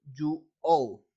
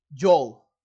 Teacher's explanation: in other dialects in United States it can be perceived as a one syllable word